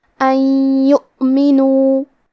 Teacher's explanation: یا حروف الادغام بغنہ میں سے ہے اور ادغام کا معنی ہے حرف کو حرف میں داخل کرنا، تو ہم یہ نون ساکن کو یا میں ملا کے غنہ اور تشدید کے ساتھ یہ حکم کو ادا کریں گے